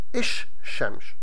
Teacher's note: called the Sun consonants and those consonants change the article meaning the L in the article changes into the consonant